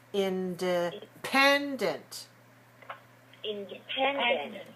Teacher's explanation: Independent has 4 syllables stressed on the third.